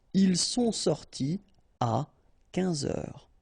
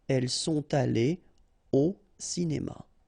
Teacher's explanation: You don't make a liaison after your participe passé. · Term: no liaison